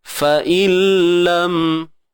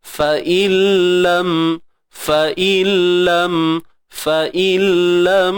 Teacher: Jadi tak adalah bunyi nun tu sebab dah diidgham, dah masuk dalam lam. Dalam huruf lam tu, fa'illam. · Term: idgham bila gunnah